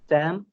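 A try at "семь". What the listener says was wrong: थोड़ा सा इसको स्ट्रेच कम कीजिए, सेम है, सैम नहीं है, सेम। थोड़ा सा कम स्ट्रेच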